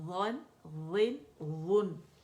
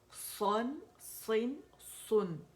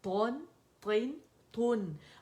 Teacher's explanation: یہ جو موٹے لیٹرز ہیں نا، یہ تو موٹائی سے ادا ہوں گے، لیکن اس میں جو نون ہے نا وہ باریکی سے ہی ادا ہوگا، اسے ہم موٹا ادا نہیں کریں گے، ٹھیک ہے۔